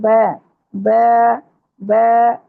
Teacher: बा होंठों के अंदरूनी गीले हिस्सों को आपस में मिलाने से ब, ब अदा होता है। इसको होंठों को चीरते हुए अदा करेंगे, स्माइल वाले स्टाइल में लेके जाएंगे, ऊपर को नहीं लेके जाएंगे, बा नहीं करेंगे, ब, ब, ब, इस तरह पढ़ेंगे।